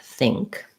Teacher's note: And then the word think has an NG and a K sound